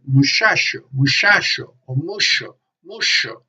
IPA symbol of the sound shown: ʃ